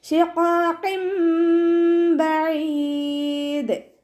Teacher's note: അപ്പോൾ തെൻവീനിലുള്ള നൂനിനെ നമ്മൾ മീമാക്കി മാറ്റി മറിച്ചിട്ട് ഉണ്ണയോട് കൂടി ഓതി കൊടുക്കുക. ഇവിടെ നൂനിൻ്റെ തെൻവീനിലുള്ള നൂനിൻ്റെ സൗണ്ടിനെ കേൾക്കേയില്ല, മീമിൻ്റെ സൗണ്ട് ആക്കിയിട്ട് മാറ്റി മറിച്ചിട്ട് ഉണ്ണയോട് കൂടി ഓതുക കേട്ടോ.